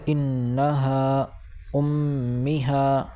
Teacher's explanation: کھینچ کر ناک سے غنہ ہو کر پڑھا جائے گا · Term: حرف غنہ